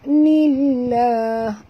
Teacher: Du du harakat ma'asli nillah alif lam, ya, syamsiah, masukkan bunyi nun baris bawah terus ke dalam lam